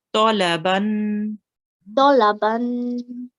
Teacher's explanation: I could hear that you rounded the to